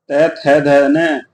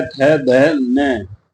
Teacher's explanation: अगर इनकी ट्रिक याद की जाए तो दांत को स्पर्श करते हुए बोले जाते हैं। जीभ जो दांतों को स्पर्श करती है तब ये बोले जाते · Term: दंत व्यंजन